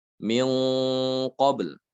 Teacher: Kalau nun itu ada di ujung lidah, ya, sementara kalau kaf dan qaf itu ada di pangkal lidah. Namun di sini tidak dibaca izhar tapi dibaca ikhfa.